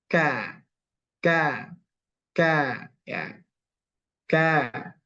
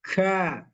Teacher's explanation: kalau Kaf dia agak ke tengah sedikit dia sudah menyentuh langit-langit yang yang keras